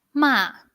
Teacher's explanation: the uh fourth tone like an angry one, a falling tone